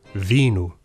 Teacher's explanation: V was pronounced v, not w like it was in Classical Latin.